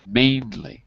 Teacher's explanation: Mainly has two syllables. The stress is on the first syllable, mainly. You can't really guess where the stress is. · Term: main stress